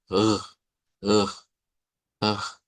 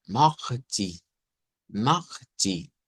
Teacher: Es como la R uvular, pero es sin vibrar, sin hacer vibrar la gútura. Eh, es como ugh, ugh, solo dejar pasar aire.